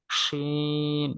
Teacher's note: জিহ্বার মধ্যখান তার বরাবর উপরের তালুর সঙ্গে লাগে, শিন। মুখ ভর্তি করে এরকম।